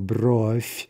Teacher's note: there's some devoicing, right, from V to F